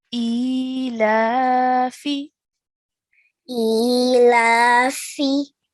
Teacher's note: So both the alif and the lam we pronounced for 2 counts, and this final letter fa we only pronounced for 1 count.